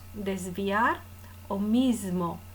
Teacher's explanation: la s de mismo o de desviar que se pronuncia por asimilación muchas veces sonora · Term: s de tipo sonoro